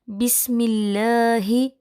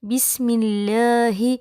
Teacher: لفظ اللہ کے لام سے پہلے زیر ہوگا تو لام باریک ہوگا، جیسے بسم اللہ، یہاں لفظ اللہ سے پہلے میم ہے اور میم کے نیچے زیر موجود ہے، لہٰذا یہاں پر لفظ اللہ کا لام پر نہیں کیا جائے گا بسم اللہ۔